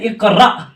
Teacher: حمزہ ساکنہ کے پڑھنے میں جھٹکا ہوتا ہے یہاں جہاں پر بھی حمزہ کے اوپر ساکن ہو